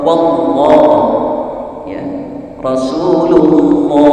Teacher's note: apabila lafaz Allah sebelumnya berharokat a atau u, maka itu disebut tafhim tebal